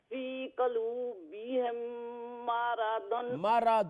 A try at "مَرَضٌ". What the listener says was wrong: مارادن لمبا نہ کرے. مارادن نہیں.